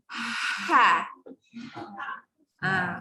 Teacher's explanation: Ha ni angin keluar dulu sebab dia tengah-tengah. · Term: huruf ha